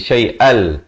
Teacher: Asalnya syai'an, tapi bertemu lam jadi syai'al, terus masuk tanpa dengung. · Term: idgham bila ghunnah